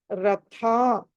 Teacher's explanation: హ థ అన్నది ఒత్తి పలకాలి మహాప్రాణం